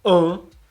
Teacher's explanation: esse A com tio, ele tá de cabeça para baixo porque é uma vogal fechada, é an, não é A, é an. Então a gente coloca ele de cabeça para baixo para representar que ele tá fechado. · E esse tio, ele sempre vai dar um som de nasalidade. Significa que esse som de an, ele tá sendo produzido aqui, ó, atrás do seu nariz.